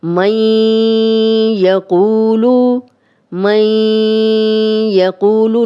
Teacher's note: نون ساکن کی بھی آواز آ رہی ہے، ناک میں بھی جا رہی ہے اور غنہ بھی کر رہے ہیں، اور یا کی بھی آواز آ رہی ہے، تو یہ ادغام بھی ہو رہا ہے اور غنہ بھی ہو رہا ہے۔ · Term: ادغام بالغنہ